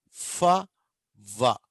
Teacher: ఒక్క పెదవే పోయి పంటిని తగులుతుంది, అప్పుడు ఫ అని పలుకుతాం